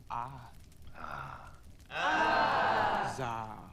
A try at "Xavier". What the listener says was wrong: No. Pronounce the X, please. Xavier.